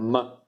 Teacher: la M è la bilabiale nasale. Bilabiale, perché fate con le due labbra, M. Mentre invece la N è dentale, nasale e dentale, la N.